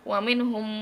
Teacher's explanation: Mim mati bertemu dengan mim. Terus dibaca gimana sih? Itu ditahan 2 sampai 3 harokat. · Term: idgham mimi